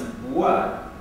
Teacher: So in the sequence bwa, the wa allows you to hear that the lip just opened